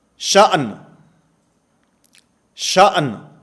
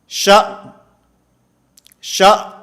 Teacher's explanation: حمزہ ساکن کی آواز تو آ رہی ہے، نون کی آواز ختم ہو گئی ہے